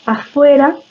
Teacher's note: la labiodental, la F, bueno, en la que los incisivos superiores se apoyan en el labio inferior